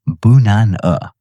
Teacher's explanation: And the word banana, a word you have known for years, it is not banana. It is bunana. Two schwas, hiding in plain sight every single day.